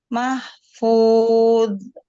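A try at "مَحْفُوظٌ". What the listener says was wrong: haknya juga dialirkan juga. Kan sudah belajar hak kan? Sudah belajar hak. Nah, haknya dialirkan juga ya. Berhentinya sampai ketemu dengan fu, baru berhenti dia.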